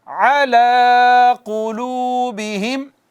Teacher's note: عین وسط حلق سے ادا ہوتی ہے